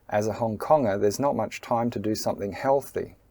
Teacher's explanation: the word healthy is the major stress or the higher stress · the word Konger and not and time are pronounced with a medium stress